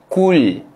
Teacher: Dekat huruf lam sukun kita jelaskan sebutan huruf lam, jangan sampai ada lantunan.